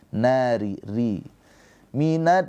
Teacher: rnya dibaca dengan tarkik tipis sebab apa rnya ini berharakat kasrah